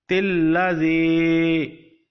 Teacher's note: you don't pronounce alif and you join te to the lam directly, and you also pronounce the zer under te